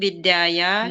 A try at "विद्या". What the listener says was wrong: विद्याया नहीं, आ की मात्रा है नहीं, विद्या।